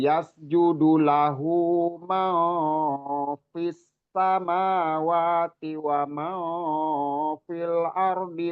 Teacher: fis sama sinnya itu lebih didesiskan lagi karena tasdid